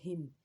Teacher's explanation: हा जो है हुर्फ़ हल्की का है हर्फ है और ये हल्क के निचले हिस्से से इसको अदा करते हैं। उसके आगे मीम है, मीम को होंठों के खुश्क हिस्से से अदा करते हैं।